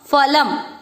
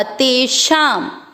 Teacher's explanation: फल पूरे पूरे अक्षर दोनों में अ मिक्स करेंगे फल। शब्द पूरा होने के बाद लास्ट वाले अक्षर पर अनुस्वार है उसको पढ़ेंगे आधा म, फलम। तेषा, शा पर अनुस्वार आधा म, तेषाम।